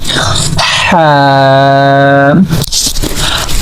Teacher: So actually in the Ha we are using our middle part of throat. So we are pronouncing from here this letter Ha.